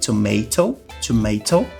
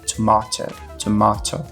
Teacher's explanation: no inglês americano a gente tem esse a um pouco mais longo com som de e tomato tomato enquanto que no inglês britânico a gente tem esse a um pouco mais grave